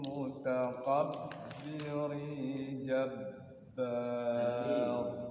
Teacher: Ada tanwin ketemu jim, mutakabbirin ikhfa itu.